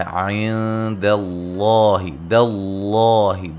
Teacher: لفظ اللہ کے لام کو موٹا ادا کریں گے · دال کو باریک، لفظ اللہ کو موٹا